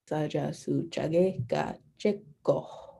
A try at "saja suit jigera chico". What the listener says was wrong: Gotta get that H a little bit, but tus.